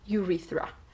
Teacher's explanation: Межзубный звук Th присутствует в слове уретра